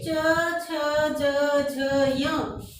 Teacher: जीभ कहाँ स्पर्श हो रही है? तालु से स्पर्श हो रही है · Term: तालव्य